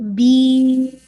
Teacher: اچھا جب بین پہ روکیں گے تو نیزل ساؤنڈ آپ نے جو لاسٹ میں جب آپ ساکن کریں گے نون کو تو یہ ناقص غنہ ہے نا، تو نون کا ساؤنڈ کلیئر ہونا چاہیے. اور دوسرا یہ کہ شروع میں نیزل ساؤنڈ نہیں آنا چاہیے، بین ایسے نہیں، بین.